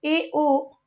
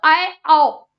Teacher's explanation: आधा खोलो ए ओ, पूरा खोलो आए आओ